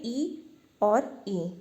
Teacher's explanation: ई और ई का जो उच्चारण स्थान होता है वो होता है तालु। ठीक है, तालु जो है ई और ई का जो है उच्चारण स्थान होता है।